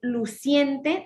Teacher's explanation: en luciente también se va a unir la i con la e no se separan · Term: diptongo